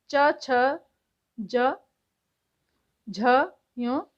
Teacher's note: तालव्य से तालू मुंह के भीतर की छत का पिछला भाग